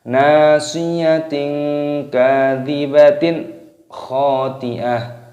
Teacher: taknya di sini berubah menjadi hak karena tanda waqaf, tanda berhenti